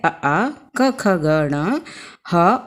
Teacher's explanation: अ आ क ख ग ण ह, और विसर्ग का उच्चारण स्थान कंठ होता है।